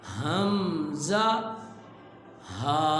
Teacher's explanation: آپ اس کو ساتھ ساتھ ادا کریں گے اور یوں یہ محسوس بھی کریں گے کہ حلق کا جو سینے والی طرف حصہ ہے اس حصے سے اس کی آواز نکل رہی ہے۔ حمزہ، ہا، یہ حلق کے نیچے والے حصے سے ادا ہوتے ہیں۔